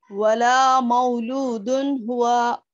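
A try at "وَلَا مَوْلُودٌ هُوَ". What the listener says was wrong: मऊ को खींच दे रहे हैं ना।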